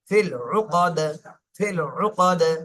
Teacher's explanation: তো এখানে দালের উপরে সাকিন চলে আসছে, জন্য কলকলা করতে হবে।